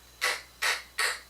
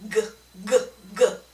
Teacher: One will vibrate through your throat and the other one will not. So the voiceless is the K. So it's K, K, K. And then the G sound will vibrate G, G, G. Okay, so make sure you can, one thing you can do is actually touch the throat, of course, again, to feel the vibration. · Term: voice and voiceless